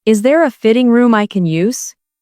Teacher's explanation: The stress here is on fitting and use.